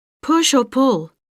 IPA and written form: pʊʃ ɔː pʊl (Push or pull?)